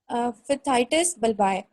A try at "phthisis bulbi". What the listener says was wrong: Thysis bulbi, P is silent.